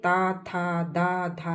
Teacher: ता जीभ हमारी टच हो रही है दांत से। तो जब जीभ हमारी दांत से टच हो रही है तो ये सारे ता, था, दा, धा सारे जीभ व्यंजन हैं।